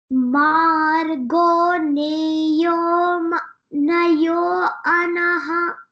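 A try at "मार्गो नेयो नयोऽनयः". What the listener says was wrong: Nayo, yo will be longer. Don't say anaya. Nayo nayaha.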